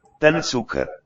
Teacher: So the C consonant letter represents a double ts sound. TS together like we have in the Z of pizza.